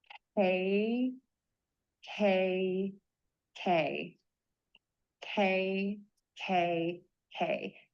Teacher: tip of your tongue is low, back of the tongue is pulled high up, air puffs out. Then keep your tongue in that same position.